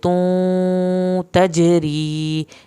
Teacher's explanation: जीम पे आपने कलकला करना है, तजरी या साकिन खींच के पढ़ा जाएगा।